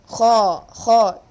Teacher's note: there should be a slight snoring sound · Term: heavy letter